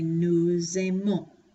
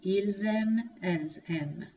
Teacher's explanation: instead of just saying nous without that S, we're going to make what's called a liaison, and we're going to say nous aimons.